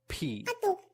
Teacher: p, p, that sound comes from building up the air and releasing it.